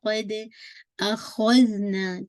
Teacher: اخذنا نا کو آپ نے اسٹریچ کرنا ہے کیونکہ نیکسٹ آیت میں حمزہ ہے. اسٹریچ کرنے کا ریزن کیا ہے حمزہ ہے مد کا سائن ہے آن دا ٹاپ. · قد دال پہ آپ نے قلقلہ کرنا ہے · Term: مد الجائز منفصل